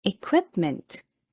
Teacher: the first word is this one it is pronounced as equipment the stress is on the second syllable